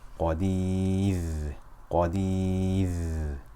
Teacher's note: But if we stop on it, we make it sakina. And now we have ra sakina preceded by ya, so we will stop as qadir. It will be light.